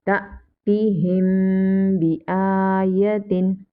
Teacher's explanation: And hamza sakina, we will read hamza sakina with jerk.